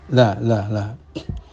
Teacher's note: istifal yakni pangkal lidah tidak dinaikkan sehingga suara mulut usual huruf menjadi tipis Iya lah lah lah